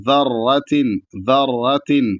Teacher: را پر تشدید ہے، را کو موٹا پڑھا جائے گا، تو اس کو صحیح سے پڑھنا ہے کہ بہت زیادہ تکرار نہ ہو اور آرام سے ادا ہو جائے، تو ذرۃ، ذرۃ ایسے پڑھنا